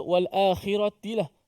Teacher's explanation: Perkataan wal akhirati, kha baris bawah. Jangan tukar kepada qaf, itu banyak juga.